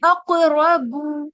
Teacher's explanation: काफ भी हैवी होगा, रॉ भी हैवी होगा, लेकिन बा लाइट होगा।